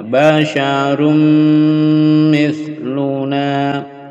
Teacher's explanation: tanwin bertemu mim dengung dipanjangkan dengungnya